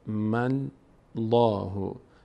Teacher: تأثیرگذار هست لفظ جلاله اینجا میم می‌چسبه به لام م الله لفظ جلاله پر خوانده میشه به خاطر فتحه ما قبل